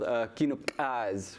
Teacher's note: it's called Kinukaz with a nice ejective K right there. That's the ejective K.